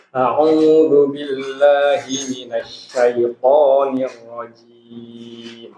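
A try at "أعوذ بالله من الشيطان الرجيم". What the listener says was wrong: ya, ingat huruf jim tidak boleh lemah ya. Nirrajim, jim.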